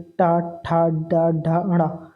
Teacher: टा वर्ग का उच्चारण मूर्धा से, जिससे जीभ मुड़ी रहती है।